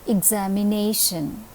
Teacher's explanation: the different aspects of word accent look at the example examination in this word the syllable nay is receiving the stress or the accent